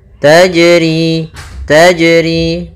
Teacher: Wasyamsu, kemudian tajri, tajri pada lafal jim, ini ada jim sukun atau jim mati, maka ia kita namakan dengan bacaan qalqalah, yang mana suara jimnya harus memantul. Taj, tapi tidak disaktah seperti ini.